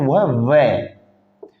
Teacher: ऐसा वर्ण जो दांत और होट दोनों के सहायता से बोला जाता है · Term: दं तोष